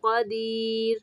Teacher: را کو ساکن پڑھتے ہوئے باریک پڑھیں گے